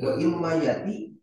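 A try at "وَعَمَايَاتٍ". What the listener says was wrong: di tanwin kan aja. Tanwin kan wa fi dolalatin wa imayatil basirati.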